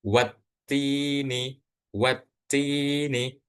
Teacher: Jadi alif sama lamnya itu enggak dibaca tapi langsung ke huruf ta. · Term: asyamsiyah